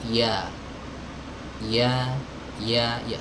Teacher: Huruf ya keluar dari tengah lidah. Ya, tengah lidahnya terangkat naik ke langit-langit.